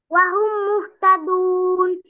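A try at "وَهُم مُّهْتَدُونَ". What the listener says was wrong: দেখেন, এই যে মিম সেকেন্ডের পরে মিম আসছে, তাহলে কি কি রুলস হবে এখানে বলেন, কি করে পড়বেন? তা গুন্না করেছেন আপনি? তাহলে গুন্না করেন। দেখেন, এই যে আপনারা এই গুন্নাগুলো যদি ভালো করে পড়েন, করেন, তারপরে টানটা ভালো করে দেন, আপনার তেলাওয়াতটা শুনলে খুব সুন্দর লাগবে, ঠিক আছে?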